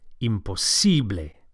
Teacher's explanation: Don't forget to stress the sible, imposible.